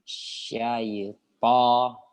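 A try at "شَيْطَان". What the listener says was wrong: Bibirnya enggak usah dibuka semua. Bibirnya jangan maju kali. Maju tuh hanya untuk doma aja. Untuk huruf-huruf yang tebal ya kita usahakan jangan sampai menggunakan bibir terlalu banyak ya. Seperti bo ya, bo.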